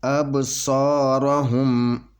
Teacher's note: اور یہ جو 5 حروف ہوں ان کے اوپر قلقلہ ہوتا ہے۔ تو یہاں پہ یہ با ساکن ہے، تو اس کے اوپر چھوٹا قلقلہ ہوگا۔ ابصارہم، یعنی یہاں پہ اب با کے اوپر جنبش پیدا ہوگی، آواز میں جنبش پیدا ہوگی۔ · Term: قلقلہ صغرا